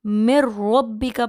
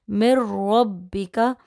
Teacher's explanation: یہی وجہ ہے کہ اس لفظ کو مِن ربک پڑھا جاتا ہے، میم کو ڈائریکٹلی شد والی را کے ساتھ ملا کر مِن ربک، اور یہاں نون ساکن یعنی جزم والے نون کو چھوڑ دیا جاتا ہے